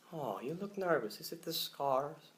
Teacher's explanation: So just using a little bit of nasal there, so you're really digging up into your nasal cavities and using those. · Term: nasal sound